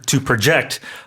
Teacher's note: the intonation being on the second syllable